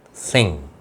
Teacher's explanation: ज़ुबान ऊपर टकराएगी, आगे आकर दांतों के पीछे नहीं टकराएगी